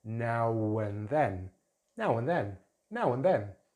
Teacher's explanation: So now ends in the rounded vowel, the ow vowel. So we could say now and then, but joining together and adding a w sound, now and then, now and then, now and then.